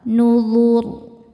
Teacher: Saat berhenti, ro-nya disukunkan dan dibaca secara tafkhim karena sebelum ro disukunkan ada harokat dhammah, maka ro-nya dibaca tebal.